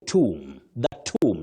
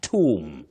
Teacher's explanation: That B after M is silent.